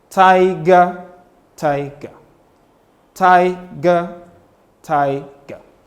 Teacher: And by the time you make the sound g, you come low. So you have one stressed syllable followed by an unstressed syllable.